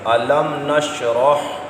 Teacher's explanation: میم ساکن کے بعد نون آیا، غنہ نہیں کریں گے، اظہار شفوی۔